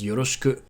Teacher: the /i/ sound can be devocalized so ‘yoroshiku’ becomes ‘yoroshku’